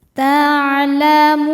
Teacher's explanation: Sebab ada wau sukun sebelumnya dommah. Cara bacanya panjang dua harakat. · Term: mad thobi'i zohiri